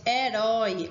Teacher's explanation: ele é acentuado ooi oi seguida ou não de s herói a última sílaba é forte é uma oxítona